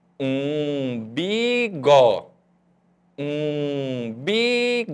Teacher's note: você vai perceber que a sílaba um saiu sonzinho pelo nariz